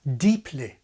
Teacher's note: Today, SSB speakers have the same vowel in both syllables of the word deeply. But in the King's RP, the word ends with the lax I of kit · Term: happy vowel